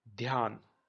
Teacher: the dh is pronounced a little short and the second alphabet is stressed more.